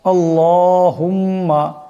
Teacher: এখানে আল্লাহ এখানে লামকে মোটা করে পড়তে হবে